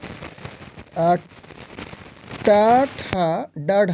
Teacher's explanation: ट ठ ड ढ करें तो यह मुर्धा से होता है यानी कि ट वर्ग में मुर्धा से